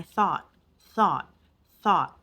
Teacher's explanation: it kind of dropped the T sound at the end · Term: drop the T sound